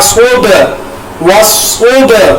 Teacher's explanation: صاد کو میں نے پر ادا کیا، با کے اوپر دیکھیں نیلا رنگ آ گیا، با کے اوپر قلقلہ کیا میں نے کیونکہ با ساکنہ ہے